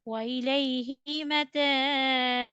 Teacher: Sound should be bounced over ba. When kasra will be dropped, so sukoon overcome ba and it will be pronounced with qalqala.